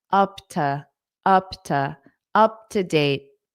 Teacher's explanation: This to will become unstressed because it's a preposition.